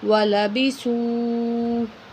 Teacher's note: واو کو تھوڑا کھینچیں گے ایک الف کے برابر